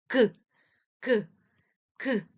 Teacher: 자, 기억이라는 글자, 기억, 그, 라는 소리를 낼 때 혀뿌리가 목구멍을 막거든요. 그 모양을 본떠서 만든 게 기역이라는 글자입니다.